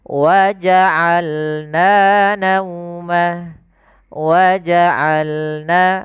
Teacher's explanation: Hati-hati dalam pelafalan ain jangan waja'alna jangan hamzah atau jangan waja'al a masuk ke ruangan hidung tapi dia a. Bagaimana dari tengah tenggorokan kita lafalkan ain